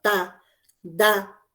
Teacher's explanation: Si ustedes articulan lentamente, verán que intervienen los dientes.